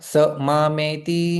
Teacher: यहां पर विसर्ग लोप हो जाएगा